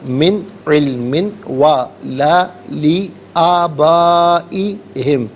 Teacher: من میں نون ساکن کے بعد عین حرف حلقی ہے، تو یہاں نون ساکن کو اظہار کے ساتھ پڑھیں گے، غنہ یا اخفا نہیں کیا جائے گا